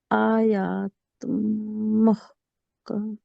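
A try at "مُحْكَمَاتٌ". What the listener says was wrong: نیم کے اوپر کھڑا زبر ہے. جی کھڑا زبر کو آپ نے ٹائم نہیں دیا تو یہاں کمی کر دی، لانے جلی محکماتن. اور ایک مسٹیک اور بھی یہاں پر کی، محکماتن آپ نے محکمات پڑھا، کاف کے نیچے آپ نے زیر بھی پڑھی.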